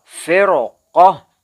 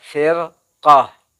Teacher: boleh dibaca ro-nya tebal, firqah, kan terdengar jelas sekali ya